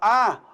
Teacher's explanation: a língua fica bem baixa quando você falar e o naturalmente a língua se eleva um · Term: vogal baixa